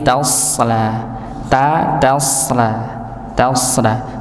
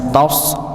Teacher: Jangan sampai taknya ikut tebal